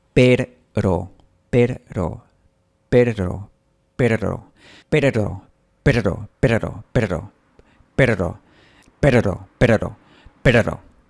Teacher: poco a poco, estoy logrando un poquito que vibre la punta de la lengua